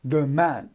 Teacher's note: So iambic, da-dum, unstressed and stressed, unstressed and stressed.